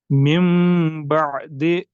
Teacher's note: एक अलिफ तक हम नाक में से आवाज निकालेंगे। ये हो गया नून साकिन के बाद अगर बा आ जाए। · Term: गुन्ना